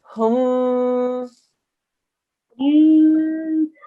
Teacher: Because it's a meme mushaddad, we do 2-second nasal sound.